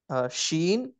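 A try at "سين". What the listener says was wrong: లేదు, సీన్ పల్చగా రావాలి. సీన్.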